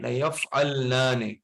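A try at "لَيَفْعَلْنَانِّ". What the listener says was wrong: لیفعلنان نہیں ہے، لیفعلنان مشدد ہے.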